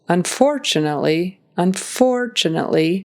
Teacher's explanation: time to park the car and drive home the word unfortunately the emphasis is on that second syllable